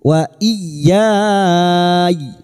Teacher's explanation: Sekarang di sini kita wasal atau terus kita uraikan pada kalimat wa i, masuk pada huruf ya yang bertasdid, hanya masuk tanpa ditahan lama-lama, hanya masuk wa iyyai. Ya bertemu mat dengan huruf hidup yang dibaca wakaf mat arid li sukun, 4 harokat kita panjangkan. Kita panjangkan ianya dulu wa iyyai.